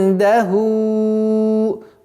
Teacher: ихфа в размере двух огласовок удерживаем, назализация применяем